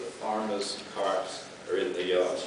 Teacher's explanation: by that we mean that r is pronounced uh wherever it's written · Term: rhotic